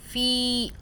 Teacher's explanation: ہم ایک الف کے برابر کھینچ رہے ہیں تو یہ مدہ ہو رہی ہے